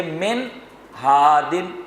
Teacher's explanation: غنہ نہیں ہوگا، کیوں؟ نون ساکن کے بعد ہا موجود ہیں